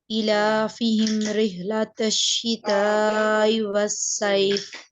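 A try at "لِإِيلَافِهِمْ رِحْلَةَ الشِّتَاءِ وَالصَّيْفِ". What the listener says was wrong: हाँ, अब आपने ठीक पढ़ा है, लेकिन ई लाफी, ये ई को थोड़ा लंबा करेंगे, इसके नीचे खड़ी जेर है, ई लाफी हिम। और रिहला का हा आपने ठीक करना है, रिहला का हा ठीक करना है आपने। रिहला, रिहलतश्शिताई।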